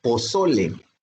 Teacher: la sílaba so es la sílaba tónica, la que más suena.